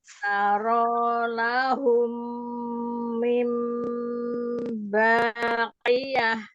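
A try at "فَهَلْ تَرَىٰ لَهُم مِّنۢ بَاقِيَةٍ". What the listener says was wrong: Sudah bagus ya. Qafnya juga sudah mulai bagus.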